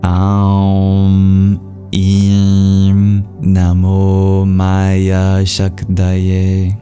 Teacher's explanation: The S with the accent is just an SH sound, and then the M with a dot under it is a nasalization